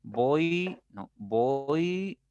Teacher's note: diferencia ya porque es mínima si ustedes pronuncian se supone que con la o tu boca está un poquito más abierta y cuando llegas a pronunciar la i tu boca se cierra un poquito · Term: decreciente